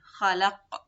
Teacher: The mad is just 2 counts, and we cannot say khalaq without the qalqala or making the qaf as a light sound · the qalqala on the qaf. When we stop on it, we stop with a sukoon.